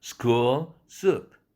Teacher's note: L 사운드로 끝나는 school이 모음이 더 길어졌어요.